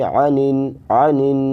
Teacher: عنن میں عین ہے تو اس کو عین نکالیں، اس کو حمزہ نہ پڑھیں